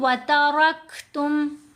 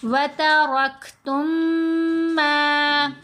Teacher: ساکن میم کو مشدد کے اندر ہی مرج کیا جاتا ہے، یعنی اگر کوئی پڑھے وَتَرَكْتُمْ علیحدہ سے اور ما علیحدہ سے تو پھر یہ غلط ہے۔ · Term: ادغام شفوی